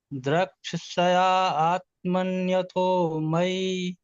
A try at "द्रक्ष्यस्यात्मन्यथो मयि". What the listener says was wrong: आत्मनि यहाँ पर कहाँ है? आ तो है ही नहीं कहीं। द्रक्ष्यात्मन्यतो मयि।